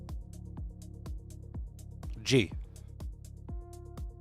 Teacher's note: In Brazilian Portuguese, it usually sounds like a soft G. Very light, almost like it slides into the next word.